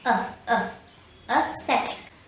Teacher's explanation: syllable set so say a set it a septic aesthetic and the first syllable contains a schwa